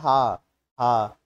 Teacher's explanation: जो हां होता है ठीक है इसका उच्चारण स्थान होता है कंठ